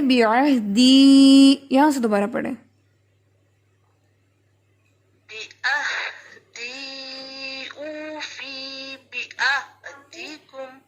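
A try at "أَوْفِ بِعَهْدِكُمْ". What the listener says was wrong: فا کی زیر جو ہے اس میں دیکھیں فا کی زیر کو آپ نے کھینچ کے پڑھا ہے، فا کی زیر ہے نیچے، لیکن ساتھ میں یا نہیں ہے کہ ہم اس کو فی لمبا کریں، سمپل زیر ہے.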